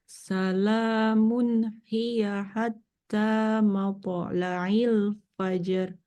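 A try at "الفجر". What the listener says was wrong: Tebal rohnya. Fajr. Fajr. Tebal.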